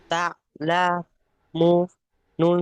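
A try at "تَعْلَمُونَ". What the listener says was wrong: এই মুনটা গুণনা হয় মুটা টান হবে ওয়াও মাদ্দা তা লামু বানান করার সময় যে টানটা হবে আর টানা পড়ার সময় সেই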